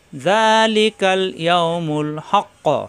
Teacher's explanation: হা মিলবে কফের সাথে হাক, হাক মিলবে কফের সাথে, হক ক, কফ সাকিন কলকলা হয়ে যাবে